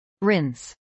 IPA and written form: rɪns (rinse)